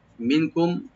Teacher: মিম সাকিন এখানে লাস্ট যেটা আছে এটা আমরা এজাহার করব, এখানে এজাহার সহবি, এখানে কোনো গুন্না হবে না।